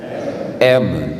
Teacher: O M também é uma consoante bilabial, mas é sonora.